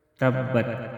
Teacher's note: تبت تا ساکن میں قلقلہ نہیں کریں گے۔